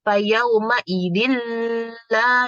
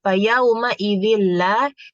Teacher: Nah, itu salah karena huruf lam, ro itu tuh dia idgham bila gunnah. Jadi tidak boleh mendengung.